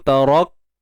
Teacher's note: Yang pertama syiddah, kemudian hams. Tahan suara dulu. Tarak, tu baru lepas nafas. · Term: Kaf yang mati